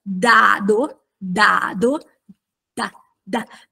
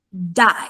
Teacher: SP effettivamente ma si vede d d d ok Questo perché in italiano l'articolazione della D è dentale d d la lingua interagisce con i denti nel momento stesso